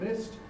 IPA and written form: mɪst (missed)